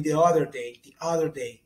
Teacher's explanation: Tem o flap T, que é quando o T se torna R ou D